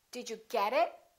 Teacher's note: I emphasized get, but I didn't emphasize it, because it is not a noun, it is a pronoun.